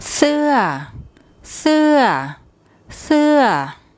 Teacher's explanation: as she actually says it there's more energy that goes into the first part of the word and then it falls away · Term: falling tone